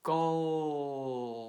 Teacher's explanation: So the L sound at the end of call also makes your vocal cords vibrate. So this is a voiced sound, right?